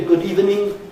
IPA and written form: ˈgʊd ˋiːvənɪŋ (good evening)